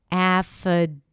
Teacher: Then we have f, an F sound, and then a schwa. In the spelling, you'll see the letter I, but it's actually a schwa sound.